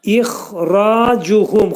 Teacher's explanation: Xa hərfinin məxrəci boğazın yuxarısında olacaq. Ra qalın. Cuhum incə.